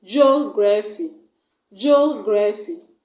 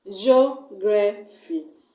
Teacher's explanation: we're going to stress on the first syllable, which is the third syllable from the end of the word. That means we're going to stress on G-E-O.